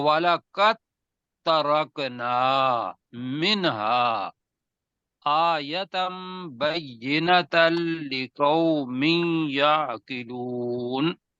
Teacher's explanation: دال اور تے آ جائے تو چونکہ ان کی جو مخرج ہے وہ تقریباً ایک ہے، تو دال کو مدغم کر دیتے ہیں اور تے کو پڑھتے ہیں۔ تو ہم پڑھیں گے والا قد، والا قد ترکنا نہیں پڑھیں گے، تے کے اوپر چونکہ شد ہے تو والا قد ترکنا منہا آیتم بینۃ لقوم یعقلون۔